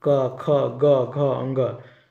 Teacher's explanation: कंठय व्यंजन जीभ कर पिछला भाग से कोमल तालु सटेला